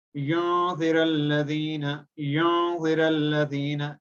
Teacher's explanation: Just we have to pronounce it completely for the volume of one alif only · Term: gunna